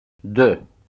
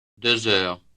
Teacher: When preceding a noun with a vowel sound at the beginning, the X is no longer silent, but is pronounced as the beginning of the second word.